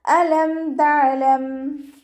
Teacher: ഹംസയുടെ മഖ്റജ് വരുന്നത് അഖ്സൽ ഹൽക്കാണ്. തൊണ്ടയുടെ അവസാന ഭാഗം, തൊണ്ടക്കുഴി എന്നൊക്കെ നമ്മൾ പറയാറില്ലേ, ആ ഭാഗം സൗണ്ടിനെ വ്യക്തമാക്കി കൊടുക്കുക കേട്ടോ.